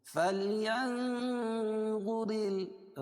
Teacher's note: نون ساکن کے بعد حروف اخفاء کے 15 حرفوں میں سے وا ہے اس لیے اخفاء حقیقی ہوگا. فلينظر را باریک ہوگی کیونکہ را کے نیچے زیر ہے